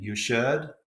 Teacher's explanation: Southern California tends to have a rising intonation